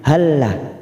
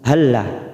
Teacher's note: Yaquluna hal dalam sukun bertemu lam, ini hampir sama dengan idgham mimi, tetapi ini namanya bacaan idgham mislain, bertemunya 2 huruf sama, yang pertama sukun, tetapi cara membacanya cukup memasukkan tanpa disertai mendengung, namanya bacaan idgham mislain, hanya masuk pada huruf lam berikutnya.